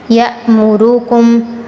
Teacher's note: را پر تفخیم کرنی ہے، کم کے میم پر غنہ کرنا ہے